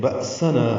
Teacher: حمزہ ساکن جھٹکے سے ادا کریں گے، سین صفیر کی آواز سے باریک پتلی آواز سے، اور نا الف مدہ ہے، 2 حرکات لمبا کریں گے.